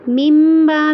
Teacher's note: ممبا میں مم پہ پہلے غنہ کرنا ہے اور پھر اس کو لمبا بھی کرنا ہے